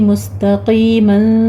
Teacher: سین پر سیٹی کے آواز کے ساتھ ہمس ہوگا, آگے آپ نے تا کو باریک رکھنا ہے, قوف کو پر پڑھنا ہے, مستا نہیں کہنا.